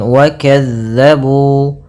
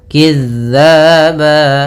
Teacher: zal ini pelafalannya dari ujung lidah kita menempel dengan gigi sari atas kita. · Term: huruf zal